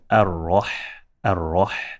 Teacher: Ha is not one of the heavy letters, therefore we have to make it flat.